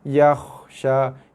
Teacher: jangan bunyi qalqalah ya kha, ataupun jangan keraskan dia yakhsha, tapi yakhsha, ada bunyi bereko sikit lah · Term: huruf kha mati